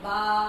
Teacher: یہ پڑھنے کا اس کا طریقہ ہے کہ اس کو ہم بولیں گے با، اور اتنا ہی لمبا کریں گے جتنا میں لمبا کر رہی ہوں. ایک زبر کی جو آواز ہوتی ہے وہ ہوتی ہے با زبر با، اور اس کو 2 دفعہ لمبا کریں تو یہ آواز بن جاتی ہے الف کی. اور اس کو ہم نے پڑھنا ہے با با، یہ با زبر با ہے.